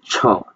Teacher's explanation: প্রতিবন্ধকতা থাকবে তার পিছনে বাতাস বিল্ড হবে। তারপর হালকা একটা ধাক্কার মাধ্যমে উচ্চারণ হবে।